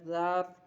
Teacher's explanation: را ساکن سے پہلے زبر ہے، اس لیے اس را کو پر پڑھیں گے